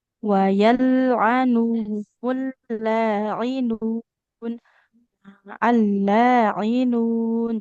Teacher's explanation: Tapi kan huruf mat itu asalnya dari al-jauf, rongga mulut. Jadi ketika baca panjang huruf nun, pastikan bacaan panjangnya tidak ikut ke hidung ya. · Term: nun panjang